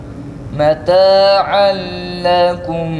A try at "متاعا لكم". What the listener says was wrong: Lekum olmaz. متاعا لكم lekum akıcı bir sesle söyle. متاعا لكم lekum değil. متاعا لكم değil.